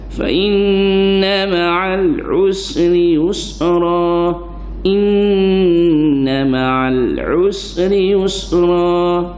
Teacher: Fa inna wajibul ghunnah, wajib dengar. Nun tasydid, mim tasydid, wajibul ghunnah, wajib dengar. Fa inna ma'al usri yusra.